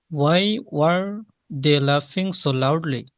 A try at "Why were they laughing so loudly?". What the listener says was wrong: Pause নিয়েন না, pause নেওয়াটা unnecessary শোনায়।